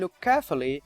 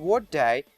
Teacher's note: k plus k, so in look carefully, or when one of the strong weak pairs, per b or ter de or ke ge, is followed by the other, as in what day, there is again only one explosion, but the closure is held for double the usual time. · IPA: /lʊk keəfli/